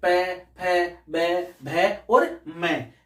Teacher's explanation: इनको जब हम उच्चारण करते हैं तो हमारे जो होठ है वो दोनों मिलते हैं, इसलिए इनको ओष्ठ कहा जाता है।